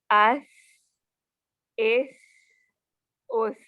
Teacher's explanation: आवाज़ जारी रह सकती है और हवा भी निकलती है ना इसमें